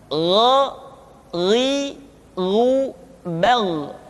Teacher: Yang selanjutnya adalah huruf Gha. Diucapkan seperti kita mengucapkan huruf Kha, yaitu diucapkan dari pangkal tenggorokan kita. Yang membedakannya adalah Kha mengalir nafas dan Gha tidak mengalir nafas.